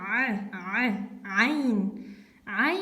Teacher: звук создается, когда у вас напряжена именно середина вашего вот этого горла